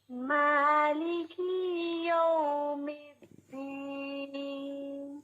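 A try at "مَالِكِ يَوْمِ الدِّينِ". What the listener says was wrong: مالکی، کاف کے نیچے کیا ہے بتائیے؟ مالکی کاف کے نیچے کیا ہے؟ کسرہ، یس. اور ہم نے پڑھا تھا کہ حرکات جو ہیں، حرکات ثلاثہ، یہ لمبی بالکل نہیں پڑھی جاتی، ٹھیک ہے؟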